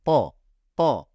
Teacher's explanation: ta harfimiz boğazdan kalın Tok ve sert bir şekilde çıkar yani patlama gibi çıkar ta ta tabancadan aklınıza gelsin Hani tabancanın sesi de patlamalı çıkar